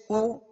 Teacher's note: पेश को अदा करते हुए दोनों होठों को कामिल गोल करेंगे · پیش کو ادا کرتے ہوئے دونوں ہونٹوں کو کامل گول کریں گے